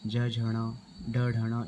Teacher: लेकिन आगे के जो तीन है इनमें थोड़ी सी लय जैसी आती है, ज झ ड ढ, इनमें लय जैसी आती है, कंपन जैसी आती है। ठीक है, इसलिए इनको कहा जाता है अघोष ध्वनियाँ।